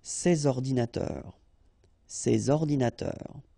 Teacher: So you should make the liaison between S and O.